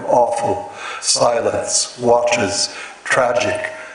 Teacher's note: An awful silence watches tragic time, where all the words except the first and the last actually have a falling trochaic rhythm